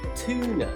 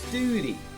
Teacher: Some Americans will often say long vowel U as an OO sound, such as tuna, like that, tuna, or duty, such as that guard is on duty.